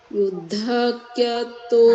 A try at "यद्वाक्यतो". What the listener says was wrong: यद्व्य है ना, यद्वा द के नीचे व है, यद्वाक